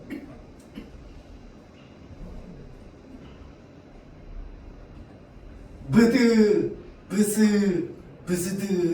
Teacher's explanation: 추측이긴 한데 아마 여기 앞에 비읍이 먼저 붙어 있는 비읍계이 어두자구는 아마 비읍 소리랑 그다음에 뒤에 나오는 소리를 동시에 발음했을 가능성이 높다라고 좀 많이 알려져 있습니다. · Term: 어두자음군